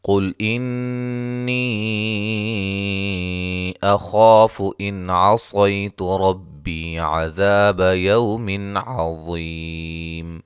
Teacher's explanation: قاف کو موٹا ادا کریں گے، نون مشدد پہ غنہ ہے، مد جائز ہے۔ خا کو موٹا ادا کریں گے، الف مدہ ہے۔